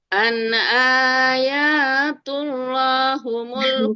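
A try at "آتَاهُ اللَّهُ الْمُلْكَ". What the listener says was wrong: Bukan an ayat. An ata.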